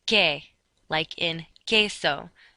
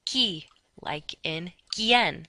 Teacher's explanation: QUE has no W sound